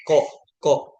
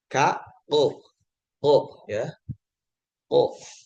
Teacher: isti'la itu pangkal lidahnya sampai naik nutup ke rongga mulut gitu. Makanya suaranya membulat. Tanpa harus dia monyongin, hurufnya seperti O.